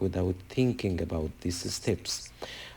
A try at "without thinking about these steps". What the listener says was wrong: without thinking about these steps, not this steps. Sounds like you're saying this singular plus steps plural, but I think it's more of a pronunciation issue than it is a grammar issue.